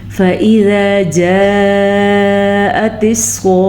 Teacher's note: فَإِذَا جَاءَتِ الصَّاخَّةُ، فَإِذَا ذال کی آواز نرمی سے نکلے گی۔ جاءت میں یہ جو مد ہے یہ 5 حلیف کے برابر ہے، یہ مد بھی اور یہ مد بھی، تو اس کو 5 حلیف کے مقدار کے برابر لمبا کریں گے۔